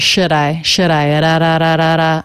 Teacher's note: the d is a flap sound because it comes between two vowels or diphthongs